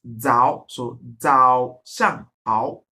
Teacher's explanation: the pronunciation of the Z is pronounced as DS, as in Z, okay, and not Z in English, okay.